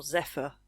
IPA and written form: 'zɛfə (Zephyr)